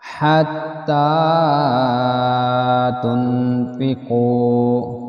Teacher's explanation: یہ ہم ہا کو تا کے ساتھ ملائیں گے, تا کے اوپر کھڑی زبر ہے, یہ تا بریک پر آ جائے گا. نون پہ اخفا ہوگا اور یہ قاف موٹا ہوگا